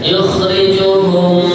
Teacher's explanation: ini mem mati berjumpa dengan mem, namanya idgham mimi